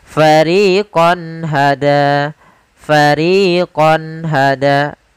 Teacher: Hada di sini ada fathatain atau tanwin bertemu dengan ha maka suara qonnya harus jelas tidak boleh ditahan dengan gunna · qonnya harus jelas tidak boleh ditahan dengan gunna karena izhar adalah menjelaskan menampakkan suara nun sukun dan tanwin dengan jelas tanpa disertai ghunah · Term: izhar halqi